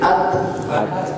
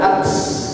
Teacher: Kuatkan pada teknya, kemudian hembus nafas sedikit. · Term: syiddah tapi ada hams